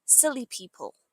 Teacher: When we say this quickly in British English, the L sound links together.